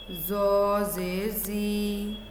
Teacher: ये भारी आवाज़ है। इसे अदा करते वक्त ज़ुबान की जड़ ऊपर तालू की तरफ उठती है और मुंह भरकर आवाज़ निकलती है।